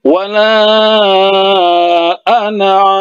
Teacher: Jadi khusus untuk ana ini, nunnya ini tetap dibaca pendek